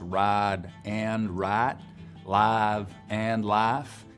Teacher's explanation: Piney Woods belt accents have full-on price smoothing, so it affects ride and write, live and life